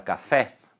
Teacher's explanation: você percebe que a sílaba tônica, que é a sílaba mais forte, está no fé